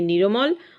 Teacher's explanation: ভক্তি কথার অর্থ কিন্তু এখানে পৃথক করে দেয়া, নতুন স্বর এসে যুক্ত ব্যঞ্জন দুটিকে আলাদা করে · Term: মধ্য স্বরগম